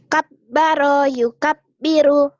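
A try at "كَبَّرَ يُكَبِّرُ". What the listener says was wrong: K-nya kurang. Kabbaro, bukan kabbaro, jangan kap ya. K, kab dari K nyamber ke B. Kabbaro yukabiru, diulang.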